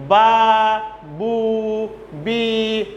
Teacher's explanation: Labial letters means 2 lips come together to produce the sounds of these 3 letters. It means when you want to utter the ba, bu, bi, then 2 lips coming together, joining together, and the sound is coming, ba, some sound are coming, like that it's used.